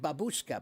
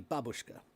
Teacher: the accent's on the first, not on the second